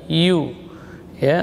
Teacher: ya huruf rakhawah dan jahar keluar di tengah lidah. Yu, ya, rakhawah dan jahar.